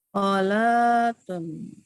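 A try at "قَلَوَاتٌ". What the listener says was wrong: Nah, tinggal dipanjangkan lamnya.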